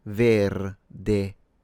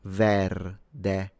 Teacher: The difference between, for instance, Spanish and Italian, at least in this case, is a matter of regional variety, because the way he said it, verde, it appears to have open e in both slots. So if you notice, this Italian speaker instead used closed vowels.